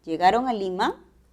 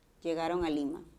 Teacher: su tono es ascendente pero podría pasar a hacer una afirmación si le bajamos